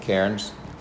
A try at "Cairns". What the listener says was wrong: Just take out the I and the R. Cans. Say cans. Like a Coke can. Say cans.